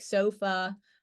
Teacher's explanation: pronounced with a relaxed tongue and mouth it's neither High nor low front nor back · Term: schah